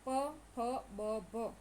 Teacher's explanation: ઓષ્ઠ કે તમારા બે હોઠ ભેગા ભેગા થાય છે